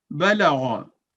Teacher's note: गौइन क्योंकि भारी लफ्ज है, थिक लेटर है, तो उसकी आवाज भारी अदा हुई